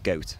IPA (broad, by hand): gɜwtᶿ